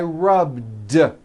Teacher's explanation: a voice to be rub today I rub yesterday I rubbed all I did was was add a voiced D sound at the end rub it's not rubbed with an unvoiced T it's rub didn't